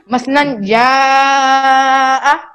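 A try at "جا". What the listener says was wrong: अब देखिए आपने लंबा किया है ना जा को, यहाँ पर लहजा बना जा, बोलिए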